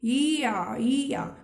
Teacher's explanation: देखिए आप बोल कर भी देख सकते हैं, आप बोलिए ई या, मतलब ई की ध्वनि के साथ आ की ध्वनि बोलेंगे तो या की ध्वनि अपने आप ही निकलेगी। बोलकर देखिए, ई या की ध्वनि निकल रही है।